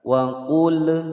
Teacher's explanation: Wa qul di sini hati-hati jangan ditawaludkan atau dipantulkan.